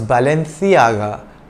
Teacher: It was a Spanish brand, and in the Spanish spoken in Spain, C is pronounced TH. So its original pronunciation was Balenciaga, like the TH in thing.